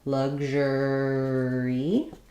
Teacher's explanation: I'm not releasing that G, and I have the j sound like measure or visual.